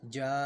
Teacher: الف کو ہم نے باریک پڑھنا ہے کیونکہ الف سے پہلے جیم باریک حرف ہے